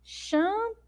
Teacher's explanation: Então, nós demoramos mais falando, né, a sílaba pu.